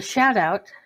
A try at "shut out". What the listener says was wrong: I think we pronounce that shut out is how we pronounce that, I think. It's not a shout out. You said shout out. It's a shut out.